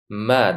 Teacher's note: Mim harfining talaffuzi o'zbek alifbosidagi m harfi talaffuziga o'xshaydi. Umuman tepa lab va pastki labni bir-biriga yopishishidan m harfi chiqadi